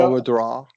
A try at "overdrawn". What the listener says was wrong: Yeah, it sounded a little bit sometimes like draw, and drawn right there, for example. Yeah, drawn, and so make sure you just keep those lips relaxed.